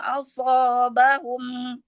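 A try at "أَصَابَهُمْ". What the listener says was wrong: Asobahum. Iya, sotnya tambahkan lagi itbaknya.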